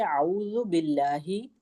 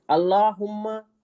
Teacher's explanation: आऊज़ु बिल्लाही लफ्ज अल्लाह को बारीक पढ़ेंगे, बिस्मिल्लाही लफ्ज अल्लाह को बारीक पढ़ेंगे, अल्लाहुम्मा लफ्ज अल्लाह को मोटा पढ़ेंगे